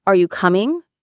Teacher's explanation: For example, if I say, "Are you coming?" with the rising tone at the end, it sounds like a question. But if I say it flatly, it sounds strange.